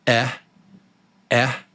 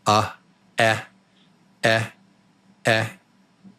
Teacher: My mouth is sort of round and relaxed. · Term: short e